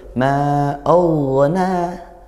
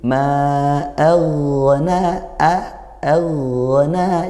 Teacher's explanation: Aghna, hati-hati, ini ghain huruf tebal, hamzahnya fathah. Hamzah itu huruf tipis, bukan o tapi a.